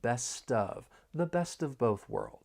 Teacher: When pronouncing this phrase, I just want to point out that more linking may occur. We can link the final consonant sound in best with the vowel sound in of · We can link the final consonant sound in best with the vowel sound in of, best of, the best of both worlds.